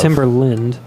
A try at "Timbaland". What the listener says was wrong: Timbaland. It's not Timber. It's not a hard ER.